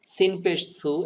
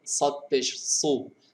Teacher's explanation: সিনটাকে চিকন করবেন, সদটাকে একটু মোটা করবেন।